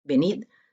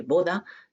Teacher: Venid tiene la oclusiva, mientras que boda tiene la aproximante.